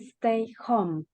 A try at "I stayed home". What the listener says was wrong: Let's pay close attention to the pronunciation of the verb. I stayed. We gotta pronounce that D at the end. I stayed home. Stayed. I'm exaggerating the pronunciation so you can listen to it. But when we're saying it, we say, I stayed home, stayed home, stayed home, stayed.